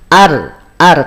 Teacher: getar ro itu bergetar berulang-ulang n tikrar ataupun takrir ar ar tapi hati-hati getaran itu ya